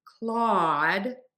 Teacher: People think you're supposed to kind of add another sound in there. This is not a diphthong in Claude. It is just an ah sound, one vowel spelled with two letters.